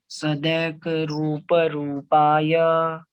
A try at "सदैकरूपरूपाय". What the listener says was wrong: देखो आई है, ये ए नहीं है। सदैक, सदैक रूप रूपाय,